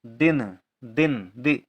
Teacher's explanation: दिन में भी ई का उच्चारण है और कम देर के लिए है